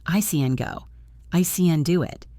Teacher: The positive word can is almost always reduced to the schwa sound. It sounds like CN.